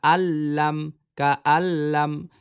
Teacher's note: গুন্না ছাড়া মিলিয়ে পড়তে হবে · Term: ইদগমে বেলা গুন্নার